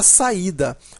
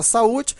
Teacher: são duas vogais juntas porém em sílabas separadas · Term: hiato